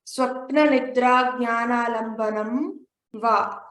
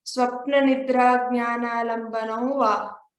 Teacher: before the Vakara, when there's an Anuswara, we have to pronounce it with a nasal sound